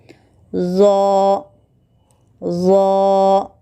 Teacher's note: زبان کی نوک کو اوپر کے درمیانی 2 دانتوں کے کنارے کو اس طرح لگائیں کہ زبان کی نوک ذرا سی باہر نکل آئے تو ظا نکلتا ہے